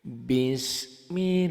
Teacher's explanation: lafadz Allahnya dibaca tipis karena sebelum lafadz Allahnya baris di bawah kasroh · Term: tarkik